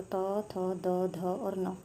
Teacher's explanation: त, थ, द, ध और न कौन से होते हैं, दंत्य व्यंजन होते हैं ये